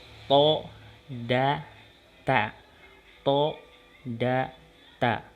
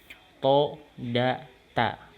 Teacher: punggung kepala lidah dengan pangkal dua buah gigi seri atas